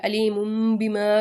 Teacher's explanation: حرف با کو میم کی آواز میں بدل کے پڑھیں گے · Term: اقلاب